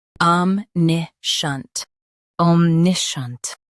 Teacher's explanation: Emphasize NIH and keep shunt smooth